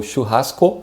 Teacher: You have this SH sound again in the beginning, and you have this ha sound very strong in the middle of the word, and the end is just O, but in Portuguese the O is a bit shorter, so churrasco, and the other word is picanha.